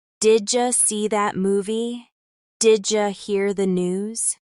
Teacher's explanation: did you becomes didja in casual speech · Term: blending